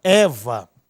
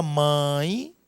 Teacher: Na palavra Eva, esse é fortemente pronunciado. Daí o E ser chamado de vogal. Na palavra mãe, observe que esta letra E, ela está fracamente pronunciada, não é? Então, aqui nós temos uma semivogal.